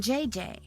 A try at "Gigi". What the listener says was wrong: En français, you pronounce G like J and J like G. She may very well be JJ in America, but in France, she is Gigi.